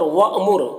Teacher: حمزہ ساکنہ ہے تو جھٹکا لگے گا